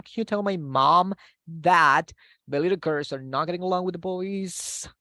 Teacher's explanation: Entonces, nos vamos para arriba al final. No nos vamos para abajo, nos vamos para arriba.